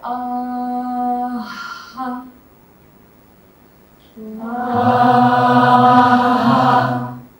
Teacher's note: we say ah, and then we just inject an injection of air on top of the ah. So we go ah, ha, ah.